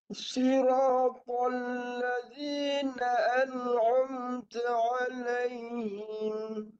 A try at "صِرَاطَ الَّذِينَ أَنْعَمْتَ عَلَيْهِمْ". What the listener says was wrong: Lam tu betul dah. Tapi jangan tebalkan. Dia terikut. Dia panggil tasyabuh. Tasyabuh ni dia terikut. Menyerupai sifat tebal to. Siratal. To tebal. Masuk pada lam, lebarkan mulut. Bagi nipis lam. To tebal, nipis. To tebal, nipis. Jadi kena cepatlah. Tebal dan nipis tu kena dia sebelah-sebelah tu. Tal siratal. Masuk lam je, nipis.